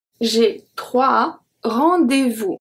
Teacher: We do not pronounce the S at 3.